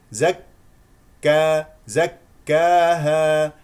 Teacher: ذلك كاف مفتوحه زك زك زك زكاها لا تقل زكاها لا لا تجعل في الالف اماله